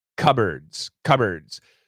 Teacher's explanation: So when we say cupboards, there's no P. The P is gone.